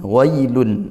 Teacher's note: tidak menggunakan mad, tidak dipanjangkan lin tapi dia dibaca lembut gitu. W tidak terlalu way seperti itu.